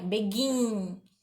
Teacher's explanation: A sílaba mais forte é o gin.